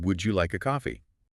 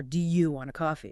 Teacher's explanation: And interestingly, while would you can sometimes reduce slightly maybe to would you, the like a part tends to stay pretty clear. Would you like a coffee doesn't collapse quite as much as do you want a coffee?